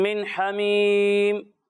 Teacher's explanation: تو پیارے بچوں، جب آپ یہاں پر غنہ کریں گے تو 1 الف کی مقدار تک ٹھہر کر غنہ کرنا ہے، یعنی 1 الف کی مقدار تک ناک میں آواز لے جا کر آپ اس کی ادائیگی کریں گے